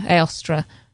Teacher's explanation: So Eostra with the stress on the last syllable. Yeah, Eostra.